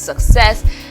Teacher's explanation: for this word success this stress is on the second syllable